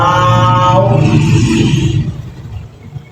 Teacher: वाव, देखिए आप वाव होंठ गोल करने हैं, बहुत से बच्चे को वाव पढ़ते हैं, वाव नहीं है, वाव होंठ गोल करेंगे, वाव, दोनों होंठों की गोलाई से